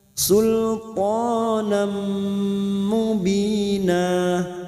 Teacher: masuk dan mendengung masuk pada huruf berikutnya yaitu huruf mim dan mendengung selama dua atau tiga harakat